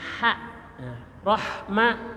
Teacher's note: kalau ha itu suara kecekik